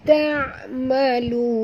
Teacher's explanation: Kemudian ta adalah huruf istifal sahabat. Jangan tebal.